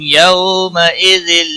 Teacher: یو واولین ہے تھوڑا نرمی کے ساتھ کھینچ کر ادا کریں گے